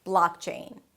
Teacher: The blaak is the primary stress. Higher in pitch, longer